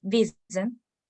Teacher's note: A diferencia de la palabra de abajo que es Wissen, donde la I tiene un sonido corto simplemente, pese a tener esta doble S.